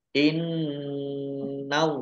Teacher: Innallaha nun tasdid dibaca gunah atau mendengung ditahan 2 harokat. Allahnya dibaca tebal karena harokat di depannya fathah